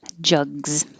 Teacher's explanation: that looks like an s but sounds like a z